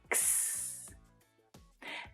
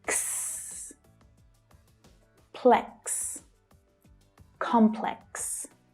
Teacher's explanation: But the real pronunciation challenge here is the cluster of consonants that are pronounced at the end. The letter X usually produces a sound that has two consonant sounds pushed together, K and S, which is what makes this sound difficult.